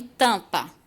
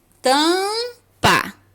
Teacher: quando a gente fala a gente não fala o m